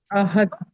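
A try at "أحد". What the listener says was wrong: दाल जो है वो कलकला के हरूफों में से है, काफ तो आबा जीम दाल कुतुब जद्दिन, तो यहाँ पर कलकला होगा।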